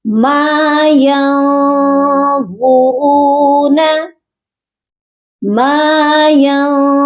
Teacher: ما نون ساکن کے بعد حروف اخفا ہے، اسی لیے نون پر ہم سافٹ غنہ کریں گے، اپنی آواز کو ناک میں چھپا کر پڑھیں گے